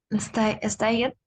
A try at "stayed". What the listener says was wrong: In this case, we don't pronounce the E, and we're going to see that next week. So in this case, it's stayed. Stayed. We don't pronounce the E.